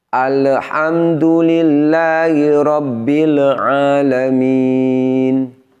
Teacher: pada dua bunyi huruf lam sukunnya ada tambahan bunyi pantulan